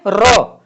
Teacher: लुंठित माने लुढ़कना, ये अर्थात जिह्वा ऊपर जाती है तालु पर और झटके से नीचे आती है र, तो इसको कहते हैं लुंठित वर्ण